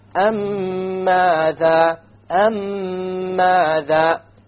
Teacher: You have a ghunna on the meme, and you will make the merging or the idgham, and there will, in the Quran it will be written with a shadda, so you will even know that there will be a merging here.